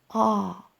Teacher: may pronounce it like oh sorry I used the English intonation in Ukranian it would be rather straight ah so it won't be like a wave ah okay well you may say it like ah or like